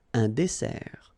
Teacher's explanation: Final T not pronounced.